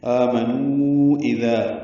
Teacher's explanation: ذال نرمی سے پڑھیں گے، ذال ایک مدہ ہے، 2 حرکات لمبا کریں گے۔